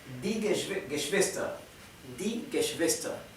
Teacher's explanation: ER al final se pronuncia con A y la R final es casi imperceptible.